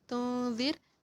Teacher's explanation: Kemudian dartahum ada idhar syafawi, amlam idhar syafawi juga, amlam tunzir ada idhar syafawinya juga, tunzir ikhfa, tunzir di zirnya ini ada ra tarqiq, ra-nya itu dibaca tipis